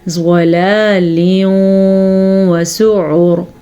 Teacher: وقف آ گیا ہے تو یہ را ساکن ہو جائے گی. ساکن را سے پہلے پیش ہے تو یہ را بھی پر پڑھنی ہے